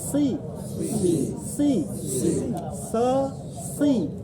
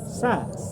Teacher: So itu lidah naik. Naik. Ini disebut isti'la. Sedangkan sa lidah di bawah disebut istifal.